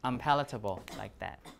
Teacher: when you have a p it should be an m right to match the place of articulation